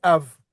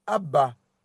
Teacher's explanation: Tu vois, le B, ils vont prononcer B. Mais en hébreu, comme c'est en deuxième syllabe, le bet devient un vet.